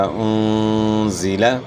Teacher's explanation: اس میں صفت صفیر ادا ہو جو سیٹی کی مثل ہے